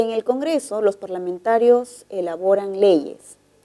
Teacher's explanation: El tono es descendente, es una oración enunciativa